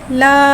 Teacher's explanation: अलिफ से पहले ज़बर आ रहा है, अलिफ मद्दा हो रहा है, लिहाजा हर्फ़ मद्दा को एक अलिफ यानी 2 हरकत के बराबर खींच के पढ़ेंगे।